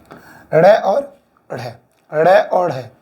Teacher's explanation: उच्चारण करते समय जिह्वा झटके से ऊपर उठकर उसके बाद अचानक नीचे गिरे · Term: उत्क्षिप्त व्यंजन